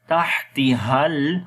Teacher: Ha we connect with the lam.